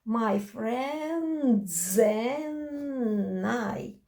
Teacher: the vowel comes and takes the consonant from the previous syllable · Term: connected speech